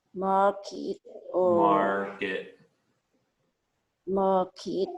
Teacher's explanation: You're not making the R sound. You're saying ma-kit, and you're skipping the R. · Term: English R sound